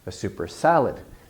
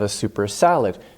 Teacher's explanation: the noun has a little more stress than the adjective before it